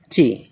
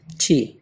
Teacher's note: ٹی میں بھی ہا کی آواز یعنی ایچ کی آواز آتی ہے، ہلکا سا ہا کی طرف میلان ہوتا ہے اور اس کو پڑھتے ہیں ٹی، بالکل ٹھی بھی نہیں پڑھتے ہیں بلکہ ہلکا سا بیچ میں ٹھی۔